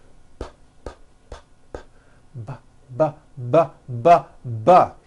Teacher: the same sound the P sound but this time we'll add voicing by vibrating our vocal chords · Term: B sound